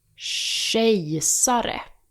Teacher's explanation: K becomes sh, like the sh in ship.